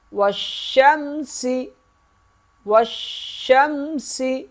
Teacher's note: واو شین زبر وش، شین میم زبر شم، یہ الف نہیں پڑھیں گے، شین کو سختی سے ادا کریں گے۔ اس واو کے ساتھ جب ملے گا شین سختی سے ادا ہوگا، کیونکہ شین کے اوپر تشدید ہے، اور شین میم سے مل جائے گا، یہاں غنہ نہیں کریں گے۔